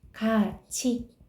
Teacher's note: 이 모음 앞에서 티귿이 치읓으로 바뀌었죠? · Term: 구개음화